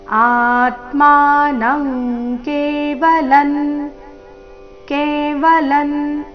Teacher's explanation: ಅನುಸ್ವಾರದ ಉಚ್ಚಾರಣೆ ಕ ವರ್ಗ ಅನುನಾಸಿಕದ ರೀತಿ